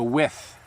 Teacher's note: I have my tongue between my teeth and I'm pushing a little bit of air out